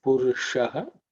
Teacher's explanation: the sha is cerebral sha